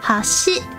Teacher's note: Bridge, hashi, goes up, but it starts around like the middle sound. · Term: pitch accents